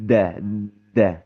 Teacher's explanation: Kalau huruf dal itu sifatnya syiddah, kuat, tertahan ketika pengucapan konsonannya saja ya, da da tertahan betul gitu ya.